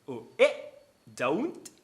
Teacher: O e don't, usando a parada glotal.